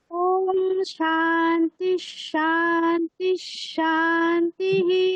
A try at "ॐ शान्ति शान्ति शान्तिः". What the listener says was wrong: বলো না, কি ভুল করলেন? সাতে নিচে বললেন, তিতে উপরে বললেন। প্রথম দুটোতে দেখুন, সা উপরে হবে, তি নিচে হবে, তাই তো? তাহলে কি হবে? শান্তি শান্তি শান্তিঃ।